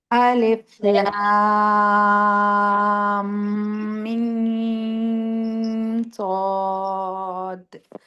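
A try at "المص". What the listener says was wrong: थोड़ा सा मुशद्दद से गुन्ना नहीं किया आपने।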